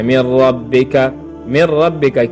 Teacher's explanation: لکه من ربک، من ربک کې د نون ساکن نه وروسته چې دی په دوهمه کلمه کې یا جدا کلمه کې په بیله کلمه کې راغلی د حروف یرملون نه. اوس دلته چې دی دغه نون ساکن دا جنس د را شو او بیا د را په را کې څه شو؟ مدغم کړل شو. · په حروف یرملون کې چې کوم لام او را دي په دې کې ادغام کیږي بغیر د غنې نه، غنه پکې نه کیږي